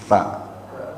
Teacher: Sa itu ujung lidahnya sedikit digigit. Sa. Nah, kayak orang cadel ya, sa. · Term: huruf sa